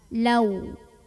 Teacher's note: ada waw sukun yang sebelumnya didahului huruf berbaris fathah. Maka cara membunyikannya cukup dilembutkan atau dilunakkan. Lau. Walau sya ada mad wajib muttasil karena ada mad tabi'i bertemu dengan hamzah dalam satu kata. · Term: huruf lin